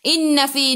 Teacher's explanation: Inna fi nun ada sabdu, tekan ke dalam nun dan dengung dua harakat. Wajibul gunnah.